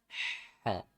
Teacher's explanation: bukan ha, tapi ha, ya, di tengah tenggorokan